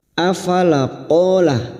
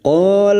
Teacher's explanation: qo fathah diikuti Alif dua harakat kita panjangkan